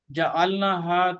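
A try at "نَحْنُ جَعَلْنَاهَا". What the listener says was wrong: جعلناہا لمبا کریں تھوڑا سا.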